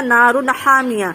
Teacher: اس کو ظاہر کر کے پڑھیں گے، اس کو ناک میں آواز نہیں چھپانا ہے، تو اسی لیے ہم نے پڑھا نارن حامیہ۔ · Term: اظہار